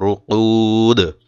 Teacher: কলকলা করতে হবে দালে